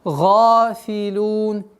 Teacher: Га твердое произношение и долгота в размере двух огласовок удлиняем фатху.